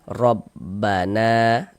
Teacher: Nah, sedangkan di sini kita yang kita temui huruf ro memiliki harokat fathah nih. Maka huruf ro dibaca tebal, dibaca tabkhim